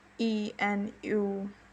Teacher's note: U, as you can clearly see and feel, is a rounded vowel, whereas E is not a rounded vowel. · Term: roundedness